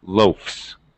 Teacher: verb it's still spelled the same l a f s and since f is voiceless I have to use voiceless s pronunciation it actually sounds like an S